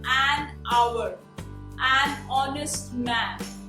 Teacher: it has a vowel sound because the consonant H is silent.